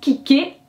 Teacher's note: En français c'est à la fin, donc du coup kicker, ah ok, j'ai mis toute l'emphase sur cette dernière syllabe